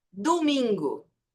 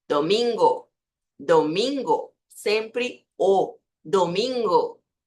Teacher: A letra O não vira U.